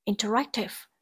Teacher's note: từ này có trọng âm rơi vào âm tiết thứ ba